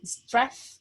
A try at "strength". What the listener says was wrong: we don't pronounce the G, we just say strength.